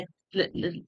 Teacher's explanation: जब जीवा मुड़ती है तो वायु अगल बगल से वायु निकल जाती है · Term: पार्श्विक